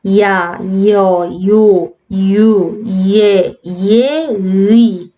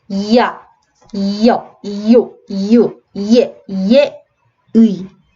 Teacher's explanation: 한 번에 뭐 야 이렇게 소리가 나는 게 아니라 이야 해서 앞에 살짝 이라는 소리가 덧나는 게 느껴지셔야 돼요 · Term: 이중모음